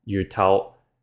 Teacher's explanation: But, with some words, for example, yú tóu, meaning fish head, the tone changed to a falling tone instead